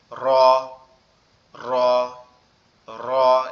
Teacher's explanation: র অক্ষরটা আমাদের জিহ্বার আগার উল্টা পিঠ উপরের তালুর সঙ্গে লেগে উচ্চারিত হবে, কম্পন কম্পন একটা ভাব নিয়ে